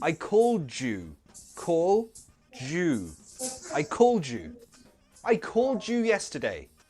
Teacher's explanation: So that d into the y sound, that little baby sounds like j.